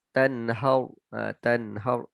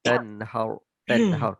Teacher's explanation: Huruf ra dibaca tebal. Ra tafkhim nama dia.